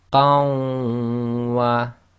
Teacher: qan, is effectively with a hidden noon sakin. When we do the assimilation, it changes to qa, we drop the noon sakin, and that joins to the waw, which you read as if it's got a shadda, so it becomes qawwa.